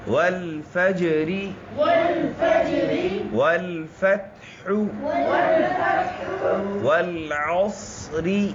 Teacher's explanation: جیم پر قلقلہ ہو رہا ہے. جیم حروف قلقلہ میں سے ہے.